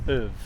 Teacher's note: In fact, many times people don't even hear these words because we weaken them so much. The vowel sound becomes a schwa. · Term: weak form